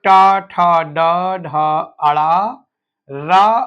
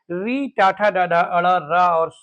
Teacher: मूर्धा बोलते हैं जब जीभ आपकी मुड़ करके पीछे जाए। जब मैं आपको बता रहा हूं तो आपको ध्यान में आएगा, अगर आप ट बोलेंगे तो जैसे ट बोलेंगे तो आपकी जीभ पलट जाएगी, उलट जाएगी।